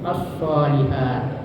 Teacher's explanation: Jadi bacanya itu as-shalihat. Jadi lamnya itu dimasukkan ke dalam shad atau ditasdidkan huruf shad sehingga lamnya tidak terbaca. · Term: idgham syamsiyah